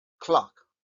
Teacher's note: es una especie de o muy abierta Casi casi tenemos que poner la boca para decir una a pero estamos pronunciando una o